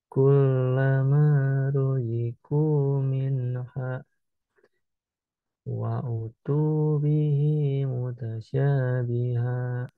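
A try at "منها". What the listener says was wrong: Minha-nya kurang panjang. Minha disambung kullama sampai akhir. Harus nyambung, harus nyambung. Minha wa utu.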